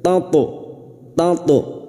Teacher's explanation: Huruf to sukun yang mati asli di tengah kalimat qalqalah sugro, dan huruf to ini huruf isti'la, huruf tebal. Maka pada saat memantulkan posisi bibir kita seperti cemberut.